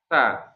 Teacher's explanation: Sa itu dia punya sifat hams ya. Hams itu kaitannya dengan udara keluar ya.